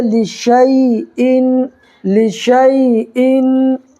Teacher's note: یا ساکن سے پہلے شین کے اوپر زبر ہے تو یا لین ہوگا، ٹھیک ہے؟ اس کو نرمی کے ساتھ ادا کریں گے